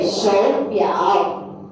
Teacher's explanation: If you find two syllables with the tone, automatically change the first tone. Okay, change to the second tone for the first character